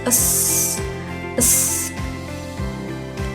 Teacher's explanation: Tak bersuara yaitu berarti karena bunyi ini tidak melibatkan getaran pada pita suara sehingga dapat menghasilkan suara yang berdesis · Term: geseran tak bersuara